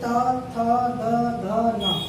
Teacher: इसमें उच्चारण करते समय हमारी जीवा प्रत्येक बार दांतों को स्पर्श करेगी, दांतों को स्पर्श करेगी।